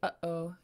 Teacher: you're just stopping the air in your throat just like when you say uhoh you stop the air and same thing here so let's say